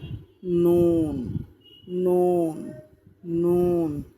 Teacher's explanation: 9 নম্বর মাখরাজ, জিহ্বার আগা তার বরাবর উপরে তালুর সঙ্গে লাগাইয়া